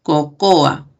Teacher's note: Cocoa, con el fonema K, que es velar.